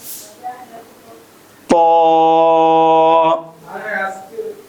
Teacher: তর মাখরাজ হলো জিহ্বার আগা সামনের উপরের দুই দাঁতের গোড়ার সঙ্গে লাগিয়ে